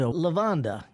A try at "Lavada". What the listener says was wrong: No, there's no N in it. It's just Lavada.